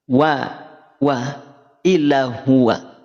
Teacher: Pangkal lidah tidak naik Sehingga konsekuensi pelafalannya dia tipis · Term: istifal